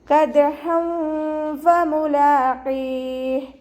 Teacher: കാഫ് ഉച്ചരിക്കുമ്പോൾ കുറച്ച് ചെരിച്ചിട്ട് ഉച്ചരിക്കുക. ദാല് കൽക്കലയുടെ letter ആയതുകൊണ്ട് ഫുൾ സുക്കൂന് കൊടുക്കാൻ ശ്രദ്ധിക്കുക. ഹ ഫതഹ തെൻവീന് വന്നു.